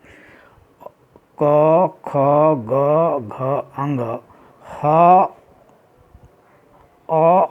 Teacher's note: इन वर्णों का उच्चारण स्थान कंठ है, क्योंकि वह कंठ से निकलता हुआ प्रतीत हो रहा है